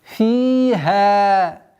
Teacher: Здесь удлинение кясры в размере двух огласовок и удлинение фатхи в размере двух огласовок.